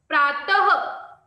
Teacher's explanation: आगे उपर नीचे लगी हुई दो बिंदियों तथा इस प्रकार को विसर्ग कहते है इसका उच्चारण ह के समान होता है